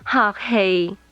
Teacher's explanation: Is mid level, mid level.